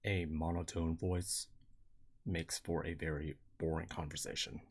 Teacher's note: it's got a gap after the word voice and before the word makes